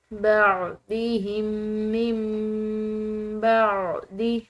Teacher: دونوں میم ایک میم کی طرح پڑھے جاتے ہیں